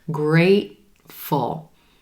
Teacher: That second syllable is super quick. We're stressing the first syllable and the gray day A vowel · What you're hearing me do is I'm holding that T sound, meaning the air's coming up into my throat. The vocal cords are closing.